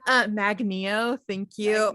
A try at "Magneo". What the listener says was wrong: It's weird that you're putting emphasis on the Neo. I would say Magneo.